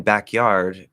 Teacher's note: we are going to just get a weak K there to push through into the Y